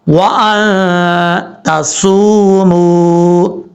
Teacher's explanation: واو مدہ ہے ایک الف کی مقدار لمبا کر کے پڑھیں گے. صاد حروف مستعلیہ میں سے پر پڑھا جائے گا.